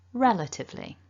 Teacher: can see this word is broken down into four syllables and we want the strongest syllable the stressed one to be the first syllable